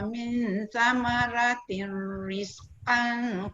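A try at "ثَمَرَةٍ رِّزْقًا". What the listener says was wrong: Kejap Datuk, betulkan sikit dekat ra tu tebalkan. Kullama ruziqu minha min samaratir. Tir tu tak dengar. Tirriz. Tu tak dengar. Ra tu tebal dan tak panjang. Samaratir.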